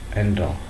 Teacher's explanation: The sound C is also not aspirated in words such as look make and talk